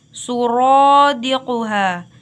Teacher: dibaca tafkhim atau tebal karena huruf ra berharakat fathah